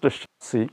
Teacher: In the French language, the last S is not pronounced, especially when it is preceded by a vowel sound.